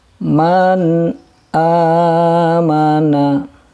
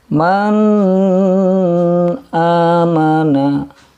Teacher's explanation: Yang pertama, mengucapkan nun sukun dan tanwin dengan jelas, sebagaimana makhrajnya. Dan yang kedua, tanpa disertai dengan dengung. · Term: izhar halqi